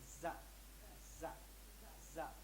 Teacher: زبان کی نوک نیچے والے دانتوں کی جڑ میں لگتی ہے